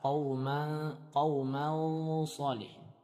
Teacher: Jadi suara dengungnya dibaca dengan tebal. Qauman sa. Apabila setelah nun sukun atau tanwin merupakan huruf ikhfa yang sifatnya isti'la atau idbab, maka dibaca dengan tebal.